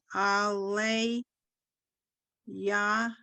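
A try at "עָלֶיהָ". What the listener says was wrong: Aleha. Aleha. The yud sort of gets mushed into the three dots. Aleha.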